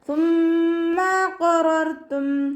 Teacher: സ ലൈറ്റാക്കിയിട്ട് ഉച്ചരിക്കുക. കുറച്ച് എയർ പുറത്തോട്ട് പോകുന്ന സൗണ്ട് കൊടുക്കുക കേട്ടോ. സീനായി പോവാതെ ശ്രദ്ധിക്കുക.